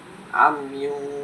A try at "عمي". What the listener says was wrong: আমিও নয় তো, আইন পেশ কি আ হবে?